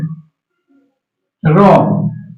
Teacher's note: র ধ্বনিটাকে উচ্চারণ করার সময় কম্পন হয়, তাই এর নাম কম্পিত ধ্বনি।